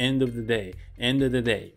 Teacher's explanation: of▁の▁v,▁v,▁v▁の音が、まあ、リダクションといって、もうほぼ発音されないので